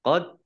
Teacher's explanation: Qad dal sukun bacaan qalqalah ya, dibaca memantul ditampakkan pantulannya